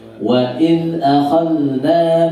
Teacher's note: dan akhadh zal disukun, tidak boleh mantul